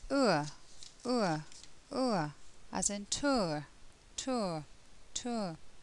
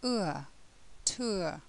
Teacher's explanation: This sound is made up of and Now the mouth begins relatively closed in this sound and becomes more open throughout the sound. The lips are rounded but become slightly less rounded throughout the sound, and the tongue moves from the back of the mouth to the middle of the mouth.